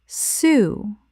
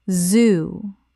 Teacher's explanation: When we say the first word, feel the silence. When we say the second word, feel the buzz.